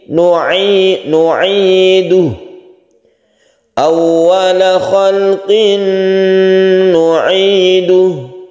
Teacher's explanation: “Khalqin nuiduh ” adalah tanween bertemu dengan seorang biarawati, kita menyebutnya idgham bighunah. Kita membacanya dengan bunyi sengau dan memanjangkannya.